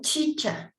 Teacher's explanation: en la Che, la punta de la lengua se pone detrás de los incisivos.